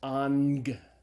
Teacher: the first gamma is pronounced as a gamma nasal as an end sound